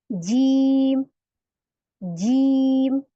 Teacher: जुबान का बीज ऊपर तालू में चिपके यानी हार्ड पैलेट है उसको लगेगा